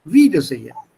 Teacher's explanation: So it's a separable prefix that stresses on the first part.